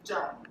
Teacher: my grandpa, my grandma, they say 种 in third tone